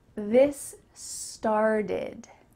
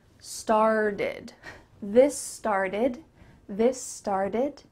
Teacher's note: The word start ends in a T, but this T is changing to a D.